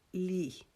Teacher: اپنی زبان کی نوک کو اور ان سامنے والے دانتوں کی جڑ کے ساتھ لگا کر تو اس کو ہم ادا کریں گے نرم آواز میں، باریک آواز میں۔ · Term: لام